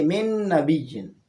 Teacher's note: اسی طرح من نبی، یہ بھی نون چونکہ حروف یرملون میں سے ہے اور ساکن ہے اور اس کے بعد نون آیا ہے، لہٰذا اس میں بھی ہم ادغام کریں گے، یعنی اس پہلے والی نون کو دوسرے والی نون میں ملائیں گے